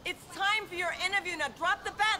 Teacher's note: everything's linked together no breaks